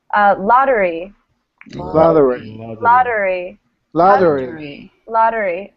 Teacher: How do we pronounce the TT? D. Like it's one T. It's like a D, actually. D sound. Lottery.